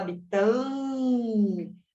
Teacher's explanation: a gente tem um A como se fosse esse A nasalizado, com o tio em cima. A gente não escuta o som do N, que é um N.